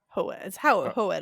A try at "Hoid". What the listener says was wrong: I think all of the vowels are pronounced. so it would be Hoid.